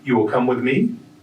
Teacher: instead of rearranging the word order you would use a rising tone